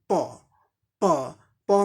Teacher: दोनों होठों को सटा के प बोला जाता है